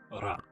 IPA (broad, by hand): ɾa